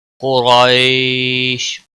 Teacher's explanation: قریش، قاف کو موٹا پڑھیں گے، را کے اوپر زبر ہے، را بھی اور پڑھا جائے گا۔ یا لین ہے، نرمی کے ساتھ تھوڑا کھینچ کر پڑھیں گے تو وقف کی صورت میں شین ساکن ہوگا، اور یہاں پر مد العارض وقفی ہوگا۔